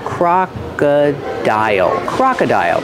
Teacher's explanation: the second vowel is uh like cup and up Croc Croc and the third vow is I like hi high